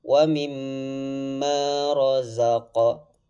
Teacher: Qalqalah itu dipantulkan huruf qafnya.